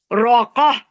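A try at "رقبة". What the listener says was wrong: نہیں با کہاں گیا با کو ہاتھ سے ملانا. خوف آپ کو با کو ہاتھ سے ملانا ہے.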